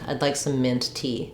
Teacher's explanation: um phrase but in mint tea we stress on tea um we give secondary stress on mint cuz it's important but the main stress comes on noun at the end